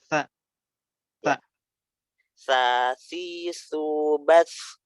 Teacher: Di sini dia nggak boleh ada suara desis itu gitu. Jadi ujung lidahnya tuh harus keluar terus nyentuh gigi seri atas, nyentuh ujung gigi seri atas ya. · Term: huruf sa